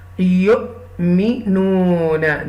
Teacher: you will read with this hamza sakina with a little bit jerk.